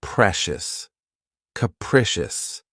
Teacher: This word has three syllables and the stress is on the second syllable. Keep in mind that the first syllable has that schwa sound krecious.